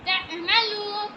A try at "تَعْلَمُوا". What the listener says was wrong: تعلا لام زبر لا پہلے. تَعْلَمُوا